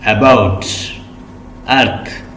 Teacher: the central part of the tongue, the part between the front एंड the back is raised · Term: सेंट्रल वावल